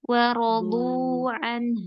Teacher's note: Wawnya tipis, Mi. Dotnya tebal, Bu, wawnya tipis.